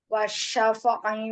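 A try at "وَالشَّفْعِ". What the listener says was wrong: Ulang, yang wasyaf. Jadi kayak ada keseret tadi. Wasyaf.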